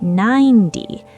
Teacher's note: The T sound in 90 becomes a soft D in American English. The T in 90 is between two vowels, so we say 9D, 90.